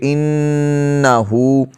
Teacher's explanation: یہاں نون پر شد ہے، غنہ کریں گے